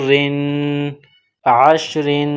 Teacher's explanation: را کو باریک پڑھیں گے اور را پر اخفا کریں گے تنوین کی وجہ سے